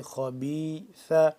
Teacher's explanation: خا زبر خا، خا کو موٹا کر کے پڑھیں گے